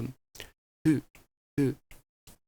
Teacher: it's pronounced as you would pronounce an F, but without using the teeth. It's called a bilabial fricative.